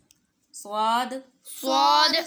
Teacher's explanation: زبان کی نوک سامنے کے اوپر والے دو دانتوں کے کنارے سے لگے گی تو صاد ادا ہوگا